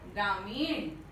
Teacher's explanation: न नहीं, मूर्धन्य ण, अण का उच्चारण कर रहे हैं, ग्रामीण, तो लिखना भी चाहिए ग्रामीण।